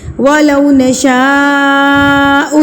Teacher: وَلَوْ نَشَاءُ، نشاء کے اوپر یہ جو مد ہے، مد متصل یعنی کہ بڑی مد، اس کو آپ نے 4 حرکات کے برابر کھینچنا ہے